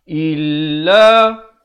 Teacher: Illa, jangan baca illa, beza il dengan il. Hamzah bari kasrah bunyi i, bukannya bunyi e. Jadi jangan baca illa tapi baca illa.